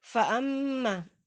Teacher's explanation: ada mim bertasdid, hukumnya gunnah musyaddadah, dibaca dengan kadar dengungan yang paling sempurna, hingga kurang lebih 2 atau 3 ketukan